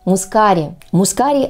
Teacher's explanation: правильное произношение этого слова с ударением на гласную а